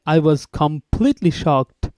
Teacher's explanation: completely would be a rising tone